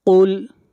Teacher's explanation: قاف کو موٹا پڑھیں گے، قاف حروف مستعلیہ میں سے ہے